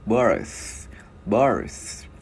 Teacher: mình đưa lưỡi qua giữa hai răng, mình ép rung ô ép thổi hơi nha.